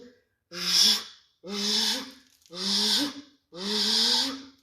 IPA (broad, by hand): ж